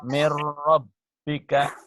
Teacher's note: idgham bila guna, artinya memasukkan tanpa dengungan.